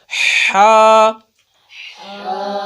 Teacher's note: تھوڑا سا سانس نکالیں گے اس کے بعد حلق کے درمیان والے حصے سے ادا کریں گے